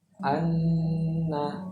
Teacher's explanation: Kalau tasdid, nun dan mim itu agak lama sedikit. Enggak. Kita lamakan, enggak buru-buru, enggak anna gitu, enggak.